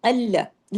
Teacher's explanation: अल्लाह और अल्लाह फर्क है ना, बोल के देखिए, अल्लाह, लाम डबल है और दोनों बारीक हैं।